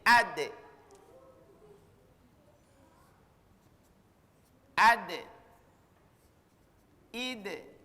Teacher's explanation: Karena kalkala berarti harus pantulkan. Untuk huruf da, pantulan itu condongnya ke bunyinya e.